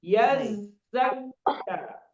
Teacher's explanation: Nah, itu pakai huruf zai. Zai itu ada sifatnya sofir ya. Sofir itu artinya desis.